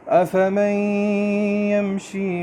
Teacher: افمن نہیں ہے یہ، کیونکہ آگے یا کے اوپر شد ہے، تو یہاں پہ ہم اس کو آگے ملا دیتے ہیں، نون کو، اس کو ادغام کہتے ہیں۔ افمن، اور یہاں پہ آواز کو تھوڑا روکیں گے۔